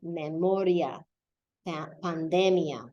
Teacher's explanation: But if it's not, words like memoria, the I is not accented and your emphasis would have to fall right before